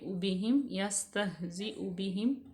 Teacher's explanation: حمزہ کے اوپر پیش ہے، اس کو با میں ملائیں گے